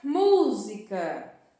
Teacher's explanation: a sílaba mais forte da palavra música é MU. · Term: sílaba tônica